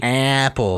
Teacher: as a midwesterner you have to shove that a way up in your nasal sinuses